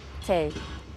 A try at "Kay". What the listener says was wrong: Tay. You can't say Kay.